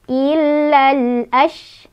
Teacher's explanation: shinnya punya sifat hamas, ada angin keluar, dan tafashi, nyebarin angin